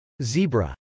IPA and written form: zˈibrə (zebra)